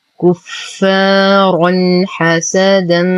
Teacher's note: نتم ضمة الكاف، نشد الفاء بعدها ألف ساكنة فهو الطبيعي بمقدار حركتين. رنح تنوين وبعده حرف الحاء الحكم إظهار حقيقي مع غنة ناقصة.